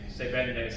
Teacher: Se vende, it's the same sound. It's a kind of a labial lip fricative.